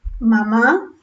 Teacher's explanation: la palabra mamá va a seleccionar un fonema bilabial, una vocal, una bilabial y una vocal